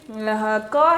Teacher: क का उच्चारण करते समय हवा फेफड़ों से निकल रही है और कंठ से टकराकर सीधा बाहर निकल रही है इसका मतलब ये हुआ कि इसका उच्चारण स्थान जो हुआ वो